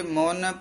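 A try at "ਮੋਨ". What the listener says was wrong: मोन नहीं कहना, मोन पोला बोलना है, उस्तत करह केते मोन प्रीत।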